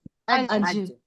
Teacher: जब हम कहेंगे अज तो पता चला हमारा जबान का बीच का हिस्सा उसके ऊपर के तालू से टच हुआ, तो हमारा ज निकला। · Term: जीम